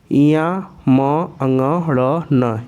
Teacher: इनका उच्चारण स्थान कंठ के साथ साथ नासिका भी है। ठीक है, कंठ और नासिका ये दोनों जगहों से उच्चारित होते हैं। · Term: पंचम अक्षर